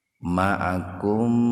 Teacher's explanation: Mimati ketemu dengan mim secara terpisah. Mim yang pertama dimasukkan ke mim yang kedua. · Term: idgham mimi